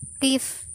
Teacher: Kasroh pendek, vokal yang timbul karena lidah depan digunakan. Letaknya di atas, mulut tidak bundar dan majhul.